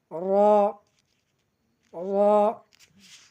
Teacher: জিহ্বার আগার পিঠ সামনের উপরে দুই দাঁতের আগার সঙ্গে লাগাইতে হবে